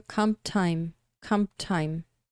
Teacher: Na hora que você fala comp time, o P juntando, né, de comp, o P juntando com o T de time, acaba desaparecendo. Então fica comp time.